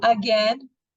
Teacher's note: O again, som do schwa no primeiro A.